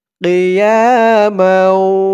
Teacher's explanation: ওয়ালা তু'তুস সুফাহা আমওয়ালাকুমুল্লাতি জাআলাল্লাহু লাকুম কিয়ামাও, কি ইয়া, ইয়া এক আলিফ টান খারা জবর, কিয়া, মিম ওয়াও দুই জবর মাও, এখানে গুন্না হবে, ঈদগামে বা গুন্না। তানবিনের পরে ঈদগামে বা গুন্নার 4 হরফের এক হরফ ওয়াও আসছে।